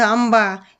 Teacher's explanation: आंबा या शब्दामध्ये आचा नाकातून उच्चार होतो म्हणून त्या ठिकाणी अनुस्वार द्यायचा आहे।